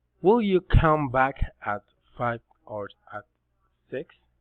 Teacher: Alternative question, rising and falling intonation.